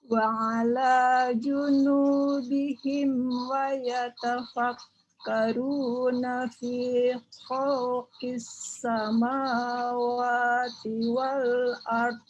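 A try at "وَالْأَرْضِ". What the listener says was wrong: Nah, jangan mantul. Wal ardi. Jadi menekan tapi tidak diucapkan vokalnya. Menekan tapi tidak diucapkan vokalnya. Wal ardi.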